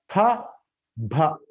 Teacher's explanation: భ చూడండి అప్పుడు మీరు నోటి ముందర బా పలికేటప్పుడు నోటి ముందర చేయబెట్టుకుంటే గాలి చాలా ఫోర్స్గా వచ్చి తగులుతుంది ఫర్ ఎగ్జాంపుల్ పలకండి ఫ భ చాలా ఫోర్స్గా మీకు చేకి తగులుతుంది చూడండి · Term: ప్లాజివ్